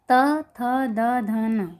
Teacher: अर्थात ये दांत से बोलने पर उच्चारण में मालूम पड़ता है कि ये दांत से टकराकर, दांत से स्पर्श होकर बाहर निकलते हैं, इसलिए इन्हें दंतव्य व्यंजन कहा गया है।